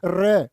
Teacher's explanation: पिरकंपित होता है रे। बोलो रे, जीभ कांप जाएगी तुम्हारी।